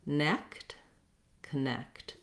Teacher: my necked syllable is long, has the clear eh vowel like in red and tent. And then my letter O says the sound, vowel schwa. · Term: second syllable stress